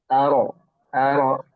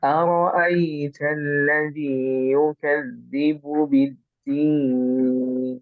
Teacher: Jadi setiap ro itu ada tebal. Jadi dibacanya bukan ra tapi ro. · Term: Ro itu tebal